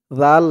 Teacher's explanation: সাথে বলুনলাহুম নাসিবু মিনাল মুলকি দিয়ে লাম ধরবে লাম দুই জবর জালের উচ্চারণটা কিন্তু নরম পাতলা হবে জিহ্বার মাথা উপরের দাঁতের মাথার সাথে লাগবে